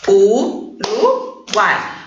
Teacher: U, A e I vão ficar juntos na mesma sílaba. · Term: tritongo